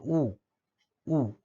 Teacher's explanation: जीभ खूप उंच उचलली गेल्यामुळे मुखविवर आकुंचित होतं. अशा स्थितीमध्ये संवृत्त स्वराची निर्मिती होते.